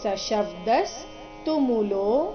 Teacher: ಸ ಶಬ್ದಸ್ ಕೊನೆಗೆ ಅರ್ಧ ಸಕಾರ ಇದೆ